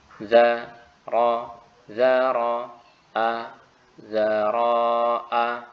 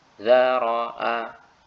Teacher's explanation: di sini saya sengaja mencontohkan yang salah, yaitu memanjangkan huruf ro. Harusnya pendek semuanya.